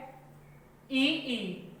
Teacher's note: तो ई जो होती है हमारे तालव्य है।